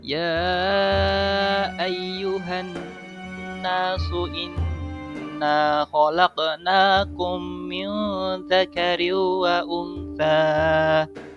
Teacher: Bacaan gunnah bila ada nun tasydid dan mim tasydid itu dibaca berdengung dengan dua harokat. atau dengan 2 ketukan, atau dengan 2 alif.